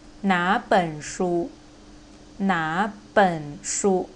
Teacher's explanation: 哪 the third tone, 本 the third tone. So you need to change the first syllable into the second tone.